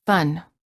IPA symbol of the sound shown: ə